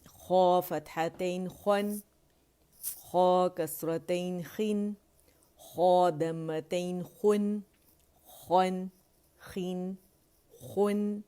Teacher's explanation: تو خا جو ہے موٹائی سے ادا ہوگا اور خن کی آواز آنی چاہیے، خن نہیں پڑھیں گے.